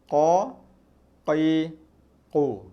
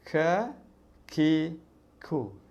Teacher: huruf qaf pangkal lidah tu kita kena dekat langit-langit. Huruf kaf dia tak kena. Dia ada angin, dia ada ruang kat situ. So bila ada ruang dekat situ, bunyi dia akan lebih lembut.